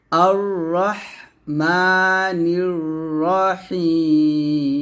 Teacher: এখানে রা বলবেন না র বলবেন মোটা করে